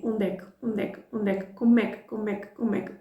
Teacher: instead of 3 words, you're going to hear like one sound